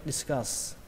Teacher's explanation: Âm này âm á các bạn nhé, discuss. Và kết thúc bằng âm sờ. Ở đây các bạn có một chỗ các bạn có thể nối, đó là chữ have với a thành have.